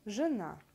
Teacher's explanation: Гласный «э» в первом предударном слоге после твердых согласных заменяется редуцированным «ыэ», который похож на слабый «ы» с призвуком «э»